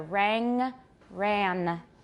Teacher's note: the air is prevented from going out through the mouth, but is able to go out through the nose because the soft palate or velum is lowered.